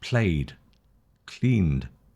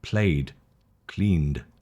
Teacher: And then the D sound is after voiced sounds.